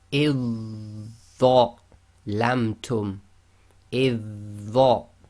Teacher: So we ignore the dhal completely, join directly to the dha.